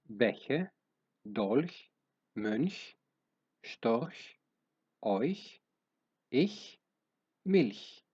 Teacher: Ενώ η άλλη του μορφή είναι ως ουρανικό, δηλαδή η ράχη της γλώσσας συναντά το σκληρό τμήμα του ουρανίσκου